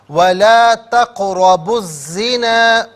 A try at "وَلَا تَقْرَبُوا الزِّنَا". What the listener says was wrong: ولا تقربوا الزنا، ولا تقربوا الزنا